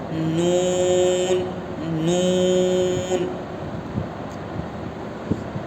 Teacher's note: نون اور میم دونوں حرف کی آواز ناک میں آتی ہے. اب زبان کی نوک کو سامنے والے دانت میں رکھ کر پڑھیں گے تو نون نکلے گا.